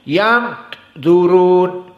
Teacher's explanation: Yang zurun dari khaisum, harus dari hidung. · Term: ikhfa